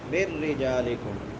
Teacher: نون ساکن کے بعد حروف یرملون میں سے را ہے، تو یہاں پہ ادغام بلا غنہ ہوگا، بغیر غنے کی۔ من رجالکم، را کے نیچے زیر ہے، را باریک ہوگی، جیم کے بعد الف مدہ ہے، ایک الف کے برابر لمبا کریں گے۔